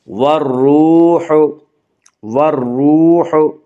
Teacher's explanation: وا مدہ کو 1 الف کے برابر کھینچ کر پڑھیں گے